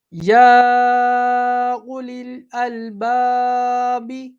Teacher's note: جب ہم اسے وصل کے ساتھ پڑھیں گے تو یہاں پر مد عارض نہیں ہوگا، پھر ہم سمپل اسے ایک انگلی کی مقدار کے برابر کھینچ کے پڑھیں گے